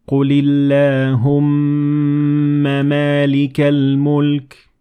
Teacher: When the meem has vowel, you will pronounce it separately even if it is followed by another meem.